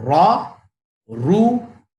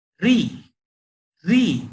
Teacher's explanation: रॉ के ऊपर जबर या पेश आता तो उसकी आवाज मोटी हो जाती, जेर आया तो उसकी आवाज पतली हो जाती